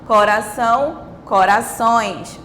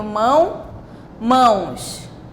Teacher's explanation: porque o A agora ele é som nasal, ele é nasalizado